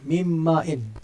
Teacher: Yang mana nun tu kita akan sebut mim. Lidah terangkat tak waktu tu? Tak terangkat. Mim ma'in, tak terangkat. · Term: idgham kamil